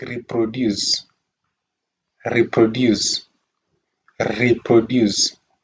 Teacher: we can stress the first part re because it has a long sound